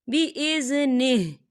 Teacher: وقف کی صورت میں ہا جو ہے وہ ساکن ہو جائے گا